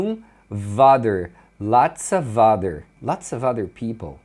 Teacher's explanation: Então, muitas vezes, quando a palavra que vem depois do of começa com vogal, é comum eles emendarem esse V na vogal que vem em seguida. Por isso que você escuta um other, lots of other people.